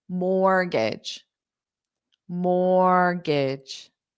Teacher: the T is silent which means it is there in spelling but it is not pronounced at all · what's interesting is the T is silent